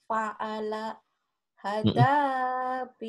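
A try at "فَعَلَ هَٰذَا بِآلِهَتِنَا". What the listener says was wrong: Man, ini berdiri tuh. Kalau berdiri panjang, Bu. Kalau berdiri panjang nih tuh, panjang. Hanya kenapa panjang?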